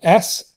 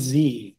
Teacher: we could have S, which is just a fricative sound that's unvoiced. But if I start voicing it, it becomes Z. And you can tell that by touching your throat. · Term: voiced or unvoiced